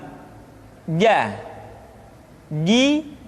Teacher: dikeluarkan dengan menyentuhkan tengah-tengah lidah dengan langit-langit